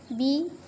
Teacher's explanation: बी दो होंठ आपस में मिल रहे हैं